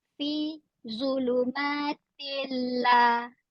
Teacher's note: Dia dengung. Nun mati dah tidak kedengaran.